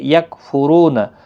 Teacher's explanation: رو پیش کی وجہ سے پر پڑھا جائے گا